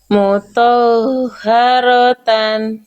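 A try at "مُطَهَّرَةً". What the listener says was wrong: Oke, muharota. Oke, to-nya jangan to yang isba. To-nya jangan isba, jangan to yang kepanjangan. Haknya yang ditekan, haknya yang dialirkan. Jadi jangan sampai dibaca mutoha. To-nya jangan mutoh, yang kepanjangan to-nya. Langsung to-nya satu harokat, tekan di haknya. Mutahharatan.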